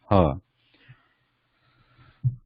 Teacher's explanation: ha is guttural, it's originating from the back of the throat, ha, but it is sibilant, requiring warm breath.